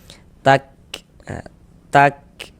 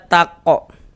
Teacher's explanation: Karena huruf kaf ini diantara sifat huruf kaf itu dia memiliki sifat hamas. Nah, jadi ketika kita mengucapkannya ada nafas yang mengalir.